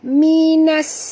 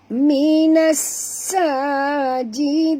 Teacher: Minas alif lam syams ya, dan bunyikan dengan jelas sofir pada sin yang mati ya